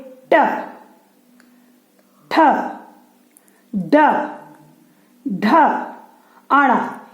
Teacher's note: इसमें हवा हमारी कहाँ रुक रही है? तालु के ऊपरी हिस्से में, जिसको क्या कहते हैं? मूर्धन। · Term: मूर्धन्य वर्ण